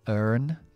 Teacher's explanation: Let's say, por ejemplo, some doctors earn, E-A-R, recordamos que nos va a dar schwa larga, normalmente, estadounidense sería con la R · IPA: ɜ: